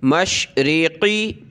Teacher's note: مشرقی قاف کو موٹا کریں